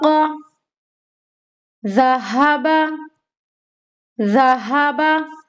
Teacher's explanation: जाल की अदायगी में हमारी जबान की नोक का बाहर होना लाजमी है